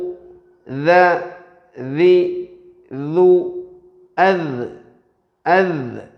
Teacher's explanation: ദാലിൻ്റെ മഖ്റജ് നാവിൻ്റെ തലയും മേലെ മുൻപല്ലുകളുടെ തലയുമാണ്, അത് മറ്റൊരു ശബ്ദവുമാണ് എന്ന് മനസ്സിലാക്കി ദാല് പറയുന്ന സമയത്ത് ഒരിക്കലും സാ പറയാൻ പാടില്ല, ഔസു പറയാൻ പാടില്ല എന്നാണ് പറഞ്ഞതിൻ്റെ താല്പര്യം.